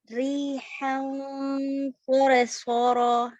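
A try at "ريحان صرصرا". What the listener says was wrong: Tebal ro, jangan soro. Ya, riha.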